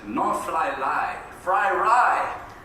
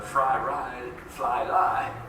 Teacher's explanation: And I learned Japanese, and I saw that in their language. They don't say R, they say L, you know, instead of R. So fry ride, fly lie, it's always these two interchangeables, the rhotic and the lateral.